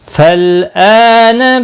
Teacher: حمزہ کے اوپر کھڑی زبر ہے، ایک الف کے برابر کھینچ کر پڑھیں گے